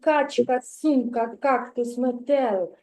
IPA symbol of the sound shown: к